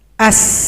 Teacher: kemudian huruf Sin as anginnya tajam as